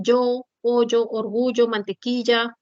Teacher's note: reemplazas a la la lateral palatal Sonora por la fricativa palatal Sonora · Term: yeismo